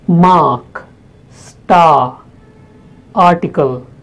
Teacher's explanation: Then the fifth vowel sound, it's a long and probably the most open sound in English